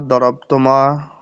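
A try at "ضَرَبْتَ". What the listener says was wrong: দরবতা জবর হবে, দরবতা।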